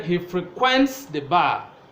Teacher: say he frequents the bar you know that is a verb and the stress is on the second syllable